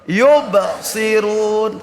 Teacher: Qalqalah apa? Qalqalah sugro, pantulannya kecil.